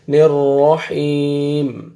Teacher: ہا کو آپ نے کھینچنا ہے، یا مد ہے، یا سے پہلے زیر آ رہا ہے